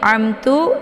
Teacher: jadi cara baca izhar syafawinya mim-nya dibaca jelas ya cukup ditekan saja